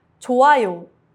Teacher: The hyut is silent before a vowel.